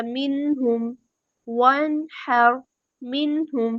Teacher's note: یہاں پہ مائنر سا غنہ جو ہے وہ ہو رہا ہے، نامکمل غنہ